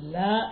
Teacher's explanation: ലാ എന്ന് പറയുമ്പോൾ നാവ് തട്ടുന്നത് നാവിൻ്റെ അരുവിൻ്റെ അറ്റവും മേലെ മുൻപല്ലുകളുടെ ഊനുമാണ് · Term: ലാമിൻ്റെ മഖ്റജാണ്